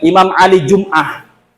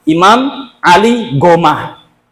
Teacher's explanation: Mesir sehari-hari bahasa Arab tapi enggak bisa bilang jim.